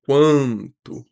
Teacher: Na palavra quanto, observa, o a é nasalizado, então a gente tem um an, que é um dígrafo vocálico.